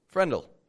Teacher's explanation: you drop the W from will and you contract it to the word before